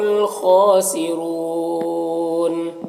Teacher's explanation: ہم الخاسرون، خا حروف مستعلیہ میں سے اور کھڑا زبر ہے، اور را کے اوپر زبر پیش ہے تو را کو پر پڑھیں گے، یہاں پر واؤ مدہ ہے، نون کا زبر وقفے کی صورت میں سکون سے بدل جائے گا تو مد عارض وقفی ہوگا